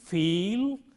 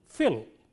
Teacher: the difference between these two words is brought about just by shortening the length of the vowel